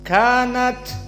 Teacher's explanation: nunnya musyaddadah berarti makhrajnya dari kisum kemudian at maka di sini ta Sakinah hukumnya hams kanat keluar nafas